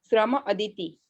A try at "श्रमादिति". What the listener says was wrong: हाँ, श्रम अदिति ने श्रमादिति, श्रमाद इति, श्रमाद इति, त का द बना है। हाँ, तो ये बोल रहे, और ऊपर त्रिषि श्रमान मास रसम, वहां पे न हुआ है, यहाँ पे द हुआ है, वहां पे ऊपर न हुआ है।